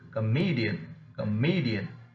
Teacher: either of these suffixes like ian il ion ik or then the second syllable from the last receives the stress